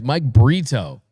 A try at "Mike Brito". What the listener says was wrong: A little bit. It sounded like burrito. Got to really enunciate.